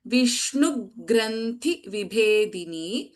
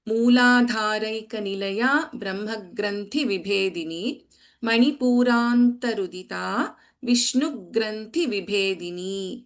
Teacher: थ एंड भ आर महाप्राणक्षरास in both द lines